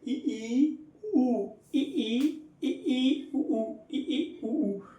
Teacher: वे स्वर जिनके उच्चारण में मुख लगभग कैसा रहता है? बंद सा रहता है, उन्हें हम समव्रत कहते हैं। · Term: समव्रत स्वर